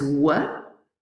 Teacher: examples of sounds with complex articulation and that was work which has a constriction at the lips but also at the back of the tongue with the velum